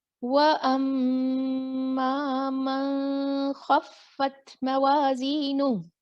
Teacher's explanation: اظہار. یہاں کلیئر پڑھنا تھا نون، میں نے اخفا کر دیا